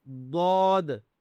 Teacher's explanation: دود موٹا کرنا ہے، زود نہیں کرنا، دود موٹا کرنا ہے اس کو